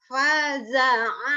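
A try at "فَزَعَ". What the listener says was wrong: Nah, fa-nya orang Sunda mah P. F. Faza'a. Abdi gigi sarua Bu, nggak bisa F. Fa, bukan paja'a ya. Faza'a.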